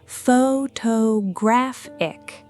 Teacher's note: the stress jumps yet again, landing on the third syllable